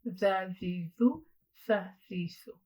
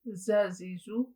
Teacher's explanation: For the letter the and tha, we're going to catch the tip of our tongue in between our top and bottom incisors